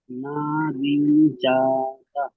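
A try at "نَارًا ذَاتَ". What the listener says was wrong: ঋণ হবে কেন ভাই? বানান করেন তো। বানান করেন ভাই।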